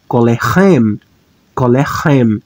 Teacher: o acento tônico vai cair exatamente no sufixo pronominal